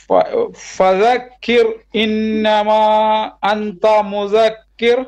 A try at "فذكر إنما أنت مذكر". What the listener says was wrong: Try to do a long mud, at least 4 beats. إنما أنت مذكر. أنت not that.